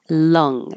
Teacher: the uh again uh low in the middle and pulled back